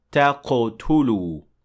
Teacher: Next is the word تَقْتُلُوا, and in this word we see قَلْقَلَ, because qaf in this case has sukun. So it has to receive qalqala